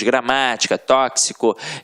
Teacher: a sílaba tônica está na antepenúltima sílaba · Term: proparoxítonas